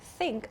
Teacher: So in the word think, I'm not using my vocal cords. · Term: unvoiced th sound